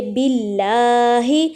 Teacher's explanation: جب لام سے پہلے زیر آ جاتی ہے، تو اس لام کو ہم باریک پڑھیں گے